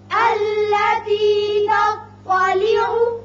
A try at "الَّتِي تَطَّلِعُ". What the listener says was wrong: تا باریک تو پر. تطلع.